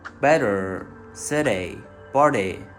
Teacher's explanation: Here you can notice that we do not have that usual t but something else more resembling a fast z sound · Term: bipoly, bipolar T